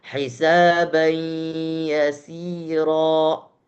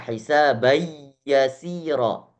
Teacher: Ada gunnah yang keluar itu berasal daripada tanwin. Kalau seandainya tanwin itu tidak ada, ya, langsung misalnya tasydid di atas ya, berarti kita bacanya hisabai yasira yang ada penekanan. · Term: idgham naqis